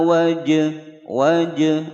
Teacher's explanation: jim berharokat sukun berada di tengah-tengah kalimat, dipantulkan hukum bacaan qalqalah sughra